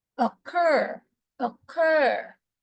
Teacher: time the first word we say C you cannot notice that the first syllable where there's letter O is longer than the second syllable where there is U ur ur so could you say it